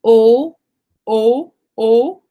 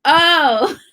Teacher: So my mouth is a little bit smaller with the Spanish O, and my jaw is a little bit more down